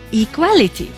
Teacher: the stress was shifted to the second syllable